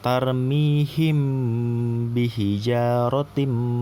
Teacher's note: Jadi dibacanya itu ghunnah dengung dua harokat gitu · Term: ikhfa syafawi